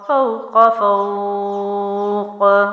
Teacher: قاف بھی حروف قلقلہ میں سے ہے تو یہاں جزم لگے گا تو میں باؤنسنگ کروں گی